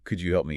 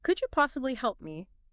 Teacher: Saying it with a falling or flat tone might sound okay, but the rising tone definitely adds that layer of politeness, making it feel less like a demand.